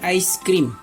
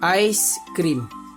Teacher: suku kata pertama mempunyai bunyi diftong AI ataupun I